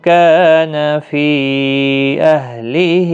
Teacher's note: کا الف مدہ ہے، فی یہاں پر مد منفصل ہے، 3 الف کی مقدار کے برابر کھینچیں